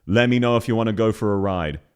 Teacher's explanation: she varies up the emphasis and the tone every single syllable, whereas in actual Australian pronunciation, it would stay flat.